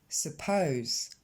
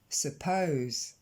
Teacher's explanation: L'accent tonique tombe sur la deuxième syllabe, donc sur le pose. Et la première syllabe, c'est ce son E, non accentué.